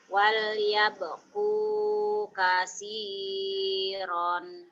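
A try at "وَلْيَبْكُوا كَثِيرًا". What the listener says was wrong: Ronnya jangan ditahan. Wal yabku kasiran. Kasiran. Jangan ditahan. Kecuali dihentikan. Kalau dihentikan. Wal yabku kasiro.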